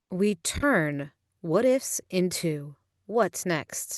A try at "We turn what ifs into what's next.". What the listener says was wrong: I want you to put more emphasis on into. We turn what ifs into what's next.